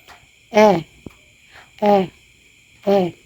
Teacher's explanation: Gitna na paharap ay ang e.